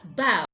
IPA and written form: bɑʊ (Bow)